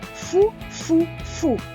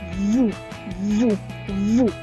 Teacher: глуха буде ось так фу фу фу а як буде дзвінко ву ву ву